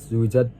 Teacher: Dan ada zuwijat. Zuwijat di situ dibaca qalqalah sugro karena ada huruf jim dibaca memantul